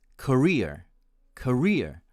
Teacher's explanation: And my American friends pronounce it as career, career, with the stress on the second syllable.